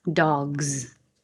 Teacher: dog by itself is voiced. You add the S. It looks like an S, but it sounds like a Z.